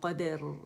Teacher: اچھا قید کر کے نہیں پڑھیں گے، قد دال باریک ہے